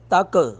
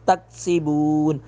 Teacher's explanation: کاف پہ کلکلا نہیں کریں گے